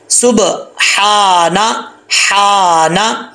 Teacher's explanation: ہا بریک ہے یہاں پہ، کھڑا زبر ہے لمبا کریں گے